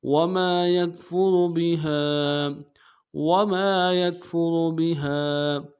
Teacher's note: یکفر میں را کو موٹا کریں گے، یا کو کاف کے ساتھ ملانا ہے اور را کو موٹا کریں گے. بہا میں ہا کے ساتھ الف مدہ ہے اور مدہ عارض ہے، دو الف دال میں کھینچیں گے